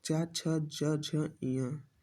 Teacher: जिन वर्णों का उच्चारण करते समय जीभ का मध्य भाग हमारे तालु को स्पर्श करता है उन्हें तालुप व्यंजन कहते हैं। च, छ, ज, झ, ञ इन्हें स्पर्श संघर्षी व्यंजन भी कहते हैं।